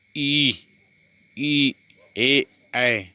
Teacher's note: जिह्वा का अग्रभाग ऊपर उठता है, अग्रस्वर कहलाते हैं। जिह्वा मतलब जीभ का जो अग्रभाग है ऊपर उठता है, उसे अग्रस्वर कहलाते हैं।